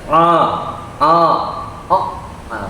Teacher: Ain itu makhrajnya di tengah tenggorokan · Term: Ain sukun